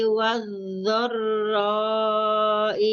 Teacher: Suaranya dari samping bukan dari depan. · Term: dhad